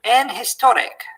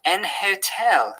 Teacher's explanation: So with silent H we would say an honest, and with pronounced H we would say a hotel. But some posher speakers tend to treat a pronounced H as if it were not there.